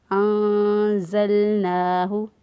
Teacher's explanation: نون کی آواز کو پوشیدہ رکھتے ہوئے ہم نے ادا کیا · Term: اخفا